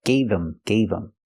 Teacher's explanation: we hear the pronunciation not him but gave him gave him the H in him is silent because the word's not stressed